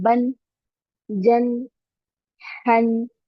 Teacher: अलिफ को स्किप करेंगे, जब तनवीन है तो सिर्फ तनवीन को ही पढ़ना है